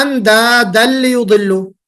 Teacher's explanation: اندادن میں جو نون کی یعنی تنوین کی آواز تھی وہ کمپلیٹ مرج ہو گئی لام میں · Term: ادغام کامل